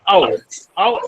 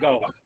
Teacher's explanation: the glide begins at a central unrounded position between half closed and half open, and moves in the direction of the vowel oo, which is a back rounded vowel just above half closed position